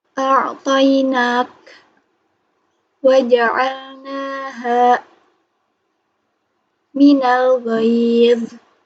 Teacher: nun yang keluar dari ujung lidah seperti huruf na.